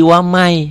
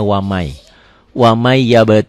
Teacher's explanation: huruf Idgham Bighunnah katakan Idgham Bighunnah itu tulisan dan bacaannya beda Tulisannya waman bacanya wa Mai n-nya masuk ke y